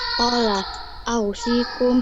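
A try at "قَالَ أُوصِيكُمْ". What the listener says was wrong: Bukan au, Kak. Bukan au.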